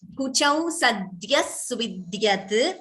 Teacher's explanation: This is dya, like vidya. It is not dha. There's no mahaprana there.